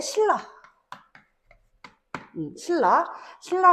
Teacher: 역행동화의 예시는 이제 신라. 신라 같은 경우에는 뒤에 있는 리을이 앞에 있는 첫 음절의 종성자리 니은에 영향을 줘서 리을로 발음되게 하는 현상